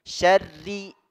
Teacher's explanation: ri-nya tipis, ya, ro-nya berbaris kasrah.